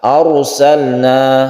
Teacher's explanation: sukun ra itu adalah tafkhim atau tebal. Ra yang tebal karena didahului dengan huruf yang berfathah.